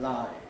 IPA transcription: laɪd